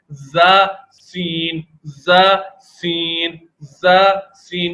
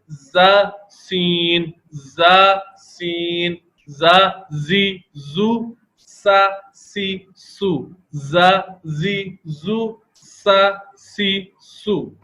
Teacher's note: یہ سیٹی والے حروف ہیں اور ان میں حلق دیکھیں تنگ نہیں ہے